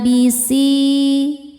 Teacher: Si mad thobi zohiri karena ada ya sukun sebelumnya kasrah. Cara bacanya panjang dua harakat.